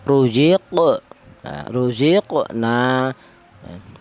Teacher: Untuk cara bacanya di sini huruf qof dipantulkan. Jadi artinya qalqalah itu ada suara pantulan.